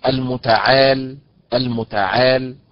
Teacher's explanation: المتعال النبر فيها على حركه العين